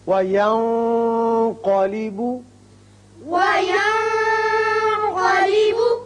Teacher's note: یہاں نون پر اخفا کیجئے اور قاف پر پڑھیے